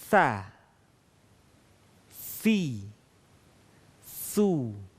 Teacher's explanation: Huruf sa keluar dengan menyentuhkan ujung lisan kita dengan dinding dua gigi seri bagian atas. Kemudian diucapkan dengan mengalirkan suara dan nafas kita secara lembut.